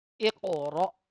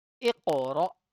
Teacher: The first word in the surah has a letter of qalqala, which is qaf, and the letter will be prominent here. And this is Hamza Sakina, so we have to read with a sudden pause and jerk sound.